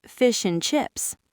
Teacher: >> Think about the word and. We rarely pronounce the A and the D.